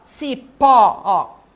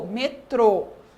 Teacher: o acento que nós temos aqui agora circunflexo vocês perceberam que quando eu falo a sílaba do acento circunflexo fica um som mais fechado Então veja aqui ó Cipó o o foi aberto ó e